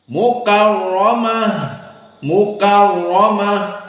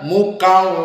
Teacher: bighhunah maka dua harakat dan Fi Mad thaabii Mukaromah Mukaromah maka RO di sini dalam keadaan tafkhim karena dia fathah dan sebelumnya fathah Mukaromah apalagi dalam keadaan musyaddadah fathah musyaddadah Mukarom dan Awas di